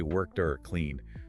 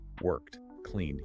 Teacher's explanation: Swallow the vowel, make it sound like a crisp t or a soft d.